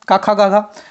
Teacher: क ख ग घ उच्चारण स्थान गले यानी कंठ से होता है।